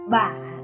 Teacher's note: dấu hỏi, low falling rising